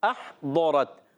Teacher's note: احضرت، حمزہ کو ہا سے ملانا ہے، حمزہ کو حلق کے نیچے والے حصے سے، ہا کو حلق کے درمیان والے حصے سے